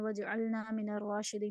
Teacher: اور وجعلنا میں جیم جو ہے اس پہ جھٹکا لگانا ہے، یعنی قلقلہ کرنا ہے کیونکہ یہ بھی حروف قلقلہ میں سے ہے.